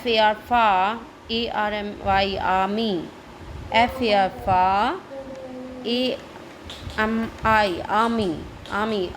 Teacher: R will be silent in both